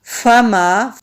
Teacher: فا ہونٹوں سے ادا کیا جاتا ہے اور ہلکی سی ہوا کے ساتھ